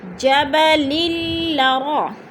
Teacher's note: لام کو لام کے ساتھ ملا کر ادغام کرنا ہے کیونکہ مشدد حرف اپنے سے پہلے متحرک حرف کے ساتھ مل کر پڑھا جاتا ہے